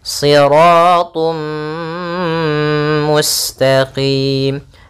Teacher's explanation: kita masukkan tanwinnya ke huruf mim dan ditahan siratum mustaqim kemudian mustaqim pada lafal qim ini ada bacaan mad alit l sukun kita boleh memanjangkannya dua harakat atau empat harakat ataupun enam harakat kita ulang lagi. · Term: idgham bighunah